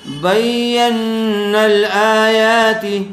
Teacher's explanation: آیات آ یا دونوں کو کھینچ کر پڑھا جائے گا